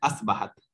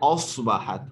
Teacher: आगे चलेंगे तो असबाहत कहते हैं, असबाहत, ये सीन नहीं है, इसको पढ़ेंगे औसबाहत, सौद मोटा है, औसबाहत। औस, सौद मोटा, गोल आवाज के साथ